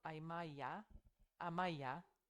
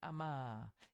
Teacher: cuando se encuentra esa vocal larga A veces es por la supresión de la ye